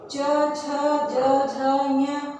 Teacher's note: च वर्ग में च, छ, ज, झ, ञ, ये तालु से।